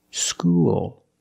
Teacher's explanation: When you said school, you used a dark L because the L is at the end of the word after a vowel